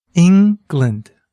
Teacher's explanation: Can you hear where the stress is? It's on the first syllable, ing.